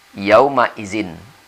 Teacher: Kemudian zin bertemu ain, di situ ada tanwin, maizin. Tanwin tetap kita baca izhar, n-nya kita baca dengan jelas karena bertemu ain.